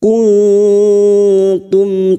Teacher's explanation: mim sukun dibaca jelas tanpa mendengung